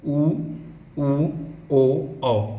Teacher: वृत्ताकार स्वर क्या होता है, जिनके उच्चारण समय आपका होठ गोलाकार हो जाता है